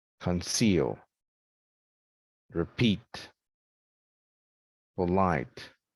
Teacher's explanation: second syllable is the root again the one we emphasize